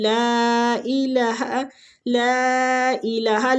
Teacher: لام کے اوپر جو مد ہے مد جائز منفصل ہو رہی ہے، اس کو کھینچنے کی مقدار بھی 4 حرکات ہے